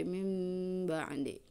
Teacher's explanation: ketika nun sukun atau tanwin bertemu dengan ba, maka cara bacanya itu adalah iqlab, merapatkan 2 bibir tapi tidak ditekan, tidak mim, tidak, tapi mim ba'di, seperti itu.